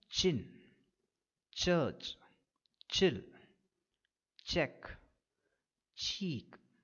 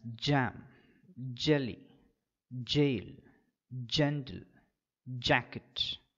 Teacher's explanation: air through the nasal cavity the air reaches here after that there is slow separation of the tip of the tongue the air escapes after the separation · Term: affricate